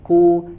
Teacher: dia ada anginnya keluar tetapi tidak begitu dominan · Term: sifat shiddah